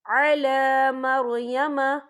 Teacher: یہ دیکھیں علا لام کے اوپر کھڑی حرکات ہے، تو ہم یہاں 2 یا 3 عدد کے برابر کھینچیں گے